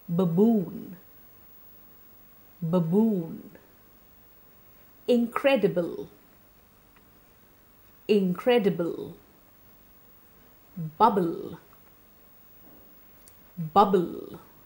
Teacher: so it's a voiced bilabial plosive